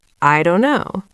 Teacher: I don't know becomes I don't know. The T in don't is very quiet or gone. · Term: deletion or elision